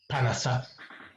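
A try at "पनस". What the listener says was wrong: Panasa. It is na. I'm not hearing the na properly. Panasa. Na is dental. Na. Panasa.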